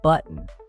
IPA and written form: ˈbʌʔn (button)